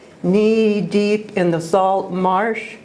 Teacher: successive as an Elliot's knee deep in the salt marsh where one long e sound follows another and then the short a sound is also repeated